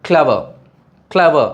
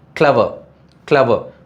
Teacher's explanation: இப்போ எடுத்துக்காட்டுக்கு clever, clever அப்படின்னு சொல்லும்போது அப்படி அதுக்கு கொடுக்குற அந்த ஸ்ட்ரெஸ் வந்து நம்ம கடைசி சிலபிளுக்கு கொடுக்குறது இல்லை பாருங்கள்